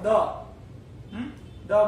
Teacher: દ બોલો એટલે દાંતને જીભ અડી જાય